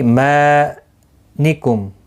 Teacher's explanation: ای یا مدہ ہے، ما الف مدہ ہے، دونوں کو 1 الف کی مقدار کے برابر کھینچ کر پڑھیں گے. میم ساکن کے بعد کاف آیا ہے، اظہار شفوی ہوگا، گنہ نہیں ہوگا.